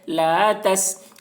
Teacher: گے، لا، تا سین زبر تس، سین کے اوپر جزم ہے، جزم والے حرف کو پہلے والے حرف تا سے ملا کر پڑھیں گے